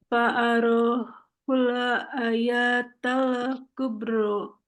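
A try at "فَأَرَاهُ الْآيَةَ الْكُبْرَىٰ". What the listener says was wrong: Nah, ayahnya harus panjang. Karena di sini ada alif. Hamzahnya di tengah, kemudian ada alif setelahnya. Jadi dia mat asli.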